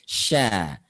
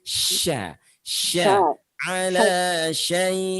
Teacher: Tafashi itu mengangkat tengah lidah kita sehingga menghalangi aliran udara atau aliran nafas kita sehingga nafasnya itu menyebar